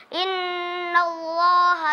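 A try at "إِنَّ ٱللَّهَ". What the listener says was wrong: Inna allaha atau inna allaha? Terlalu tekan ke huruf lam. Kasih haknya lam, tapi tidak perlu terlalu tekan ya. Kelemahan di huruf ta, kelemahan di huruf ha, dan kemudian di kalimat Allah.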